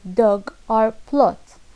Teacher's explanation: back rounded vowel and we have o like dog or plot short low back slightly rounded vowel